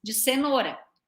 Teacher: tá saindo um pouquinho de ar entre os dentes